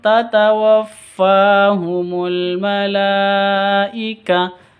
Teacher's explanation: Ada ada layar bertemu dengan hamzah di satu kata. Berarti mad wajib muttasil. Panjangnya itu wajib 5 atau 6 ketuk.